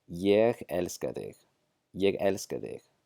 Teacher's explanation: The Thor sound becomes an eth when the pronoun is unstressed in the middle of the sentence. So we're not going to drop the Thor letter.